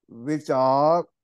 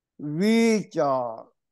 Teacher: ਸਿਹਾਰੀ ਦਾ ਉਚਾਰਨ ਬਹੁਤ ਛੋਟਾ ਹੁੰਦਾ ਹੈ ਲਘੂ ਮਾਤਰਾ ਕਹਿਦੇ ਆਂ ਸ਼ਾਰਟ ਵਾਵਲ ਕਹਿੰਦੇ ਆਂ ਬਿਹਾਰੀ ਦੀ ਟੋਨ ਸਾਊਂਡ ਲੰਬੀ ਹੁੰਦੀ ਹੈ ਜਿਹਨੂੰ ਦੀਰਗ ਮਾਤਰਾ ਦੀਰਗ ਵਾਵਲ ਲਗ ਵਾਵਲਸ ਡਬਲ ਵਾਲ ਕਹਿ ਦਿੰਦੇ